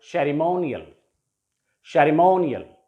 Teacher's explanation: So the stress will be, as per rule, the stress will be on the penultimate syllable